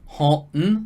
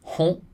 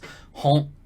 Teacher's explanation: there's no G at the end, but it's kind of a chopped off n